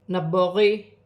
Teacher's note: با ساکن ہے, حرف قلقلہ میں سے ہے, قلقلے کے ساتھ ادا کیا جائے گا